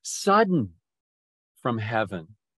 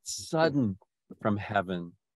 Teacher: the accent is on the first syllable